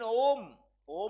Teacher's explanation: जिसके उच्चारण में समय तीन मात्राओं का लगता है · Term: प्लुत स्वर